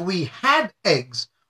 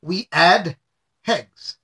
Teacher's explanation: it's very commonplace for members of my community to drop their h's